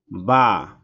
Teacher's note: দুই ঠোঁটের ভেজা জায়গা হইতে উচ্চারিত হয় বা